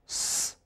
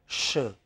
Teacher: in the former you have less air, less tension on the tongue and tongue is almost in the neutral position